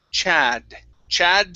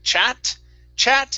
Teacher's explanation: a d is a name okay chad chat okay push to push your tongue back in your mouth just a bit your tongue is touching your teeth that's why it sounds like a t okay so instead of a t you want to d chad